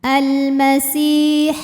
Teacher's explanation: Si matobi'i zahiri karena ada ya sukun yang sebelumnya berbaris kasrah. Cara bacanya huruf sin panjang 2 harokat.